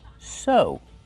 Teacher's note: Use the long O sound like no and go.